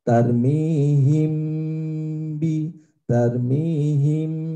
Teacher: mim sukun bertemu dengan ba maka dibaca samar dan dengung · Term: Ikhfa Syafawi